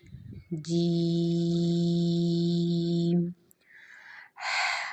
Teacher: جیم کے لیے ہم نے زبان کا جو درمیانی حصہ ہے اس کو ہم نے اوپر کے تالو کے ساتھ ملانا ہے اور پھر ہم نے ادا کرنا ہے جیم۔